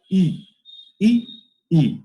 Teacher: এর উচ্চারণটা হচ্ছে ই, আর এটার এই ইটা কিন্তু যখন আমি দীর্ঘ উচ্চারণ করব তখন এই আমার ঠোঁটটা কিন্তু একটু স্ফীত হবে, আমার ঠোঁটটা একটু চওড়া হয়ে যাবে